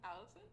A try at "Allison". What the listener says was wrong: you just said that as a question. She just said her name is a question.